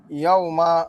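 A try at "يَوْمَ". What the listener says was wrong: মা তো হরকত, কোনো টান নাই।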